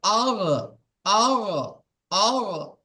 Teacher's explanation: গইন বলা হচ্ছে গইন, গলার শেষ অংশ হইতে উচ্চারিত হয় গইন